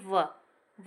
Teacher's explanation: दंतोष्ठ जो वर्ण होता है दंतोष्ठ, उसमें आपका आ जाता है व ध्वनि